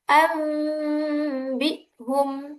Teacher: Adapun contoh membaca iqlab dalam Al-Qur'an contohnya anbi'hum dibaca an bium bunyi nun mati berubah menjadi bunyi mim mati